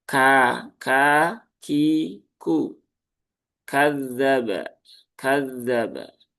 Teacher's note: Huruf kaf itu tidak sama dengan huruf K di dalam bahasa Indonesia. Dia ada sifat hames yang ikut keluar ketika ditunaikan hurufnya baik dalam kondisi sukun ataupun berharakat.